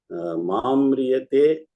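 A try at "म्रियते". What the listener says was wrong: So mriyate, it will go like that. Oh no, don't bring ma. Don't bring ma. Mriyate.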